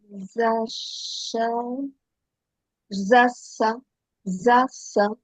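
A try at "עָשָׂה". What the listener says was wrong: C'est un Aïn. Assa. Assa. Assa.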